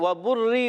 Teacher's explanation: واو کی ادائیگی دونوں ہونٹوں کی گولائی سے · وبری با پر پیش یہ بھی ہونٹوں کی گولائی سے. با کا مخرج ہے دونوں ہونٹوں کا تر حصہ